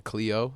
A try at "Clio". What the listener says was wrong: So and it's pronounced, it's Clio, not Cleo, but that's cool.